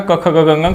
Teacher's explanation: क ख ग घ अंग कंठ से उच्चारण होने वाली ध्वनियां हैं ये